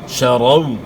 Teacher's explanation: وولین کو اپنے نرمی کے ساتھ ادا کرنا ہے اور معروف ادا کرنا ہے. شرو پڑھنا ہے, شرو نہیں پڑھنا.